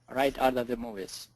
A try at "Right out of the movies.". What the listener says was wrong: Great job. Very good.